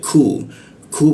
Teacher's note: Ku di siku tenggorokan, lidahnya kita turunkan sehingga membaca huruf ku itu ada hembusan udara dia